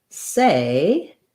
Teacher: in the word say, we have the A vowel. That's a diphthong, it's tense. We typically spell A with AY or AI.